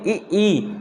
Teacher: तो जीभ तालू से चिपक रही है नीचे।